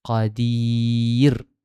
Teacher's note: Ra mestilah dibaca dengan nipis. Hujah yang kuat mengatakan kenapa dibaca dengan nipis, tengok pada huruf di belakang.